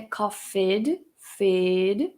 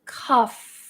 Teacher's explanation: Cuidado que não é coughed, fed, não tem essa vogalzinha no meio. Faz direto do F pro T.